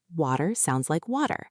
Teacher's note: American English is often more rhotic, they pronounce the R's, and they use the flap T.